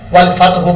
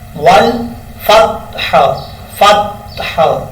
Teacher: ہا کو بریک پڑھنا ہے اور ہا کو کلیئر کرنا ہے۔ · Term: ہا ساکن